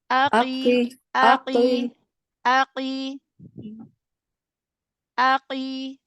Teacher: Q pada kasrah itu tingkat ketebalannya yang terakhir tingkatan tafhim yang terakhir Jadi jangan terlalu ditebalkan jangan terlalu dibanting gitu jadi aii gitu